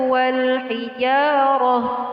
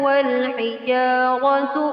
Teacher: jika Anda ingin berhenti, ta ini diganti dengan ha, yang disebut ta marbutah